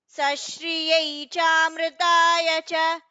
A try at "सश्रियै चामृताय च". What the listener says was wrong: सो in the second line second pada it is sashriyai and not sashriye, please correct it.